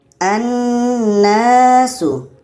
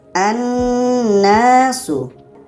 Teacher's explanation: Jadi kita baca dengan annasu. Annasu lamnya tidak kita baca. Ada secara tulisan tapi secara bacaan tidak kita baca.